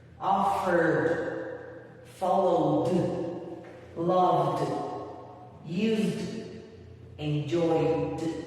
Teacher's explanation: esas palabras vas a encontrar una vibración en las cuerdas vocales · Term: sonido de D